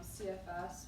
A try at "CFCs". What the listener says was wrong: CFCs. You said CFS.